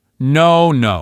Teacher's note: Hear that long open O sound?